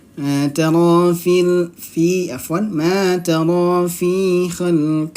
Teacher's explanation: Mad tabi'i ra-nya berharokat fathah, ro berharokat fathah, maka dia apa? Ro-nya tebal atau tafkhim.